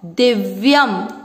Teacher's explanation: अब तीसरा चरण, दी छोटी मात्रा लंबा नहीं खींचेंगे, आधा व, आधी अक्षर को पूरे के साथ पढ़ा दिव, य दिव्य, य पर ये है अनुस्वार, शब्द के अंत पर लास्ट वाले अक्षर पर है तो इसको पढ़ेंगे आधा म